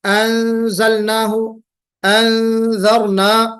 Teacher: تو اخفا میں نون اپنے مخرج سے نہ نکل کر ناک کے بانسے سے نکلتا ہے، اس کی آواز خالی نکلتی ہے